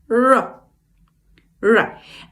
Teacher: tip of the tongue, not touching anything, right under our palate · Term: sound r